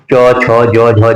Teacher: तालु को चट करती है। जैसे च जीभ हमारी क्या है? तालु से जोर टच कर रही है। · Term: तालव्य